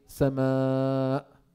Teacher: Because of the hamza, we need to prolong more than two harakas. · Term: mad muttasil